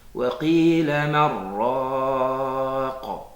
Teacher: on fait la fusion entre le nun et le ra. On n'entend plus le nun, mais on ne fait pas intervenir le nez pour dire man raq.